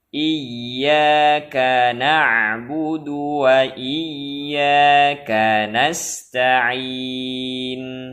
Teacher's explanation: Ka-nya terbaca panjang sehingga melahirkan alif di depan kafnya